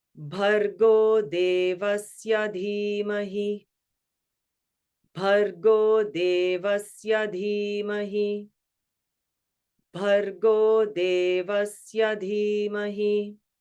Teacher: bhargo means an aspirated sound in the beginning, BH, right?